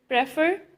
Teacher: stress is on second syllable